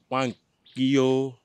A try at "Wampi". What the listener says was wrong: Okay, remove the O. Wampi. Say Wampi.